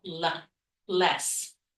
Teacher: The reason for the light L is that L comes at the beginning of the second syllable, l, less. The others coming at the end of the word, O is that dark L sound.